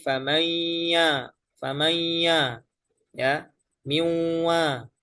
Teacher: mengaktifkan suara khaisyum pada saat mengucapkan huruf yang kedua. Nah, ini khususnya setelah nun ee adalah wau dan ya.